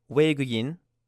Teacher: You have a O, like rowboat, and E, like tree, but it actually sounds like we